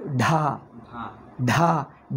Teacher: ಢ ಅಂದರೆ ಕಂಠದಿಂದ ಉಸಿರು ಬರಬೇಕು